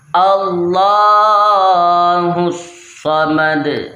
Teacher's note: ویسے یہ صمدو لکھا ہوا ہے پر وف کی وجہ سے دال ساکن ہو گیا ہے، جس وجہ سے ہم نے آواز کو لوٹانا ہے